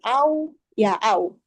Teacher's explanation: huruf waw itu dengan membulatkan bibir secara ringan, bukan monyong sih, seperti membulatkan bibir atas dan bawah. Nah, wawnya ini bukan waw sukun, bukan waw mad, atau waw as-sakinah bi ghairi mad.